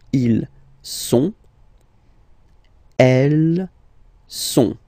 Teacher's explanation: ils sont, final T not pronounced.